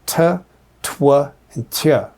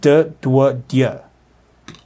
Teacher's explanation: Labialized, meaning you have lip rounding as part of it, and palatalized, meaning that your tongue is kind of moving towards the top of your mouth, the palate, and it makes kind of a y sound. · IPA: d, dʷ, dʲ